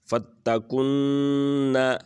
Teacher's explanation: یہاں پر اخفا کریں گے، یعنی غنہ کے ساتھ ہم اس کو پڑھیں گے